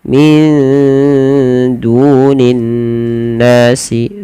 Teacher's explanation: ada nun sukun bertemu dal. Samarkan nunnya kepada huruf dal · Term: ikhfa